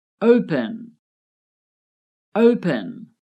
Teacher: The O is stressed. The last syllable, pen, is not stressed